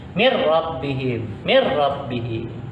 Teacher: Masukkan bunyinya ke huruf yang kedua, yang satu nun matinya, yang kedua huruf ra-nya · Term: idgham bilaguna